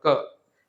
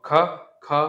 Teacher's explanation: यहाँ क बिल्कुल साफ है क, और ख, ख में हा मिलेगा तुम्हें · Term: हा ध्वनि